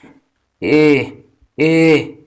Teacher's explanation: स्वर हैं ए और ए, जो कंठ तालु के योग से बोले जाते हैं।